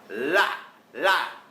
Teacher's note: เสียงLก็จะมาจากปลายลิ้นกับฟันบนนะครับ